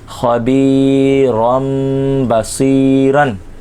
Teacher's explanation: رن کی جگہ رم تنوین کی جگہ میم کی آواز نکلے گی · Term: اقلاب